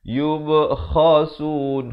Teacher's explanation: Kha ni makhrajnya di hujung kerongkong dan waqafkan sekurang-kurang 2 harakat.